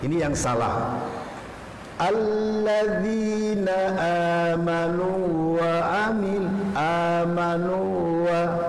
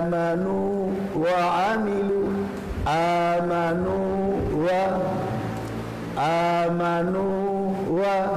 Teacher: Di sini wawunya harus wawu matinya harus idhar. Jangan sampai terjadi idgham.